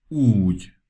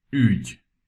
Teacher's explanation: If you look at my lips when I utter U, I make my lips round and tighter. When I utter Ü, I make my lower lips flatter and my lips just a bit looser. You also need to know that the U without any accent and the U with one accent are the same sound, just shorter and longer forms of each other.